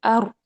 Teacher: अर अर यह नहीं होनी चाहिए बल्कि मुशाबे तकरार होनी चाहिए। यानी हल्की सी one one two two times जो है वो तकरार होनी चाहिए। यानी हल्की सी कबाहट पैदा होनी चाहिए जो कि इसके इनराफ के वक्त ही अदा हो जाती है।